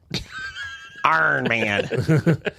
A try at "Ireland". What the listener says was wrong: See, is it just the O and the N that get you confused?